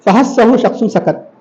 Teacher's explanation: آپ پڑھنے کے بعد بھی تھوڑی سی سانس جاری رہتی ہے, حروف محموسہ کہا جاتا ہے.